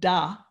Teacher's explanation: the consonant is primarily high frequency and it has diffuse energy it's a little bit like a click and the vowel has more low frequency bands and discrete energy